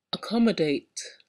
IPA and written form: əˈkɒmədeɪt (accommodate)